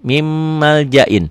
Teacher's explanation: Nun sukun, nun mati ketemu mim. Ditulisnya min maljain, dibacanya jadi mim maljain. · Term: idgham bigunnah